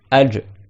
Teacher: le Jim est au milieu de la langue